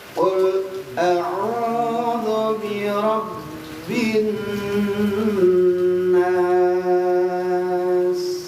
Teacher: Bin siddah lagi, tasdid lagi tapi dita tahan. Kalau rab enggak perlu ditahan, tapi kalau bin ditahan. Nasnya panjangin empat harakat.